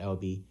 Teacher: the third tone we remember it's the downhill or lower pitch